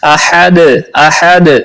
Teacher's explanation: احد، ہا کو ہا نہیں بنانا، احد پڑھنا ہے۔ حلق کے درمیان والے حصے سے ہا ادا ہوتی ہے، تو اس کو احد پڑھنا ہے، اور دال پہ قلقلہ بھی کرنا ہے۔